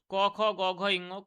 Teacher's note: কন্ঠ থেকে এটা উচ্চারিত হচ্ছে কন্ঠ থেকে তো কন্ঠ থেকে উচ্চারিত হচ্ছে তার জন্য এটার নাম হচ্ছে কন্ঠ ব্যঞ্জন ধ্বনি